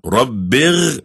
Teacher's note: While you're between the two prostrations and you're sitting, you say, Rabbir firli, Rabbir firli. This r sound is like a gargling sound.